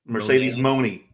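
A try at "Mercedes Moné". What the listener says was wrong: Not Monet, like money.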